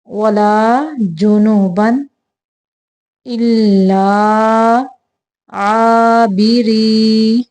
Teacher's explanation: یہاں پہ تنوین کو صرف ظاہر کرنا ہے، اظہار کا قاعدہ ہے